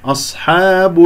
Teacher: أصحاب، الهمزة مرققة، الصاد مفخمة مرتبة رابعة لين ساكن، فأنت تقول خطأ أصحاب، خطأ أصحاب هكذا. والصاد من أحرف الصفير يجري فيها الصوت رخوة ويجري فيها النفس مهموسة